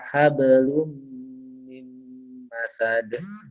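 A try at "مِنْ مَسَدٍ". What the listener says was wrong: Mim masad, mim tasydid jangan lupa ditahan. Agak lama tahannya.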